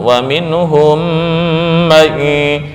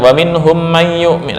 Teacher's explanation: Yang penting ada kadar dengung lah. Ya, ukuran 2 ketukan